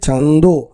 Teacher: চন্দ্র থেকে চান্দ এরকম ভাবে কিন্তু থাকে অর্থাৎ নাসিক্য ব্যঞ্জনটা থেকে যায়